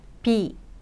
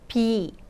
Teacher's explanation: 나라는 뜻은 단모음으로 그리고 무엇이 있다의 비는 장모음으로 길게 발음을 해주시면 됩니다.